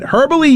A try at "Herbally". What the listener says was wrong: Herbally. No, it's a silent H. Herbally.